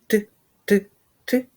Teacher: краї язика прилягають до верхніх кутніх зубів утворюючи ну для повітря струмінь повітря розкриває зімкнення між язиком і верхніми зубами і ми з вами чуємо звук т а зараз давайте встановимо · Зверніть увагу що зуби у нас зближені але не зімкнуті кінчик язика стукає у верхні зуби але не висовуються між ними бічні краї язика прилягають до верхніх кутніх зубів утворюючи ну для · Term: твердий приголосний